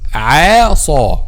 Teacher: Make a letter Ain a light letter and make a letter Sad a heavy letter. Light and then Saw heavy.